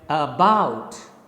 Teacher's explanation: the first syllable is unstressed it is a weaker syllable and the second syllable bout is stressed it is a stronger syllable so you speak it like about you can't say about about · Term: iambus